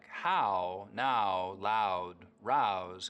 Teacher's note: In words like how, now, loud, rouse, Canadians still use that wide ow diphthong.